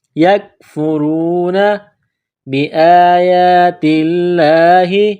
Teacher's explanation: ساتھ ملانا ہے، را کو واو کے ساتھ، یکفرون بآیات اللہ، حمزہ کے اوپر کڑا زبر ہے، یا کے اوپر کڑا زبر ہے، 1 الف کے برابر کھینچنا ہے